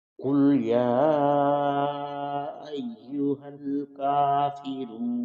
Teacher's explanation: کافرون کا کاف باریک پڑھا جائے گا، اس کے اوپر کھڑا زبر ہے، اس کی مقدار ایک الف کے برابر ہوتی ہے. تو را کے بعد واو ہے، اس کو بھی ایک الف کی مقدار لمبا کیا جائے گا.